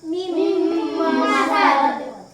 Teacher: nun sukun dilebur masuk ke dalam mim, jadinya bertasydid